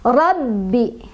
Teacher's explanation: Rabbi, baknya punya tasdid jadi kita agak tekan bacanya.